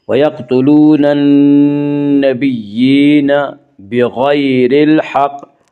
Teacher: غین کو پر پڑھیں گے، غین حروف مستعلیہ میں سے ہے